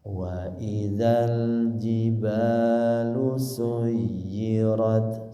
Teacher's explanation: Suyirat sama yanya bertasdid disempurnakan ditekan dulu.